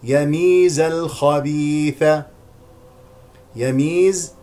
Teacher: يميز بفتح الياء الأولى وكسر الميم مع المد الطبيعي